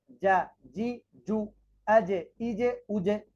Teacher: জিমের মধ্যে কলকলা রয়েছে এবং সেই কলকলা নিচের দিকে যাবে